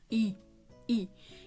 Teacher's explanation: पूरा भार ऋ यानी कि आपकी मुर्धा पर उसके बाद है तालव्य स्वर यानी कि आपके तालू पर इनका सबसे ज्यादा भार आएगा